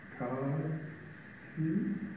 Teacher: And then the voice is off, and the A is on, ka, si. But somewhere in the transition from A to S, the voice is shut off.